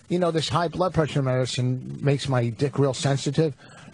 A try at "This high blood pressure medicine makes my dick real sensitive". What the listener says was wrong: Why did you underpronounce medicine and overpronounce sensitive? This medicine makes my dick real sensitive.